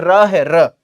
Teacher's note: र का उच्चारण स्थान होता है प्यारे साथी दंत मूल